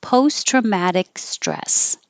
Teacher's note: I need to put that little mark there to remind you to hold it so you don't have post traumatic. Don't make a K sound, just hold your tongue in the back for the K.